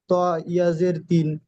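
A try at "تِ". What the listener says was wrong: তা দুজের তিন, তো ইয়াজের তিন নয়, তা দুজের তিন।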